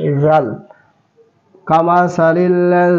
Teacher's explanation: জাল আবার জিহ্বাটা উপরের সামনের দাঁতের নিচে